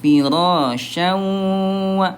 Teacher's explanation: Wini maya ditahan dua ketukan lambat dan juga didengungkan